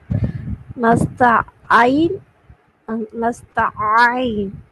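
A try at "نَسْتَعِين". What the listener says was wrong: ஆதான் முதல்ல நஸ்தஈன் என்று அலிஃபை ஒதுக்கிறீங்க. அதுக்கு பின்னால நஸ்தஈன் என்று ஐனை உச்சரிக்கிறீங்க. ரெண்டும் ஃபத்ஹத்துன் வச்சு உச்சரிக்கிறீங்க. இங்க வைக்கணும் கஸ்ரத்துன். அதான் கஸ்ரத்துன் வச்சு உச்சரிச்சு காட்டுறேன். நஸ்தஈ நஸ்தஈ நஸ்தஈ ஐ அல்ல ஐ நஸ்தஈ.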